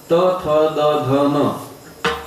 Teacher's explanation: काही दंत वर्ण आहेत, म्हणजे आपली जीभ दाताला लावावी लागते